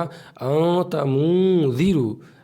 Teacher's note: देखिए इसमें आपको गुन्ना करना पड़ेगा, देखिए यहाँ लिखा हुआ है ना, नाक में आवाज़ को छुपा करके पढ़ना है, यानी गुन्ना के साथ पढ़ना है